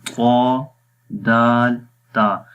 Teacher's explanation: जुबान की नोक को जब ऊपर वाले दांतों की जड़ों पर लगाते हैं अंदर वाली साइड पे, तो उस वक्त दाल अदा होता है।